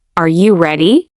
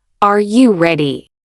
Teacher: Can you feel your voice lifting at the end? That rising pitch is what signals that you're asking, not telling now. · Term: rising intonation